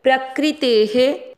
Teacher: प्रकृते शब्द को ध्यान देना है, प्रकृति नहीं होता है, प्रकृते ते में ए की मात्रा है तो विसर्ग को पढ़ेंगे हे। प्रकृते है क्री में क्र है, यहाँ पर देखो क्री नहीं है क्र है।